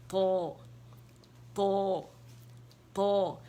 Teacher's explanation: زبان کی جڑ اوپر اٹھانی ہے تاکہ وہ جا کے نرم تالو سے لگے، تب تو ادا ہوگا اور آپ کو نظر بھی آئے گا، ٹھیک ہے.